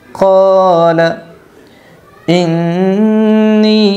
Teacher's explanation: نون مشدد کا غنہ ہوگا اس لیے یہاں غنہ کرے گی، اور مد منفصل ہوگا اس لیے نی کو 3 الف کی مقدار کھینچ جائے گا